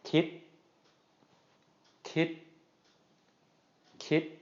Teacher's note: this is going to be pronounced as a short high tone